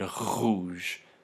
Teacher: And these make a difference in that when this R sound, when this uvular fricative follows different sounds, for example, rouge in French, rouge is voiced. You can hear that my voice box is vibrating as I make that, as I pronounce that word rouge. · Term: voiced uvular fricative